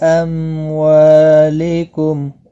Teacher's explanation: ام والی میم کو ظاہر کر کے پڑھیں گے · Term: اظہار شفوی